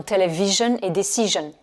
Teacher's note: Et là, c'est une particularité de l'anglais où chaque fois que vous avez du SION, le IO, c'est le son schwa, et le S, il se prononce je. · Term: son jeune